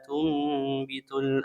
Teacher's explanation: Kemudian nun sukun bertemu dengan huruf ba hukumnya iqlab. Nunnya berubah menjadi mim disertai dengan gunah